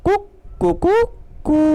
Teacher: पहले हल्की आवाज़ में कुक, अर्धमात्रिक, फिर एक मात्रिक, फिर द्विमात्रिक, और अंत में वो लंबी कू की ध्वनि टेर निकालता है। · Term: प्लुत स्वर